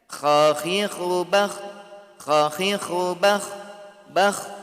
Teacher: Suara mengalir, udara mengalir dan juga tebal karena terangkatnya pangkal lidah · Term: isti'la